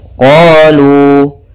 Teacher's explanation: Yang pada huruf qaf yaitu adanya fathah bertemu alif, yang pada lu yaitu adanya dhammah bertemu waw sukun. Maka panjangnya harus sama, 2 harakat. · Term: mad tabi'i